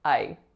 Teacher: only one vowel, and that vowel is a really low frequency vowel. The sound that it makes is I.